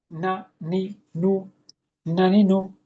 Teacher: এরপর নুন। এটা পাতলা ও গুন্না